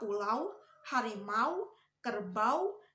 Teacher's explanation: Diftong au diucapkan mulai dari ucapan bunyi sandi antara a dan u dan berakhir pada ucapan u tidak sempurna atau menghasilkan bunyi w.